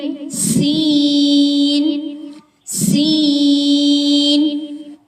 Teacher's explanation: سین، باریک سیٹی آنی چاہیے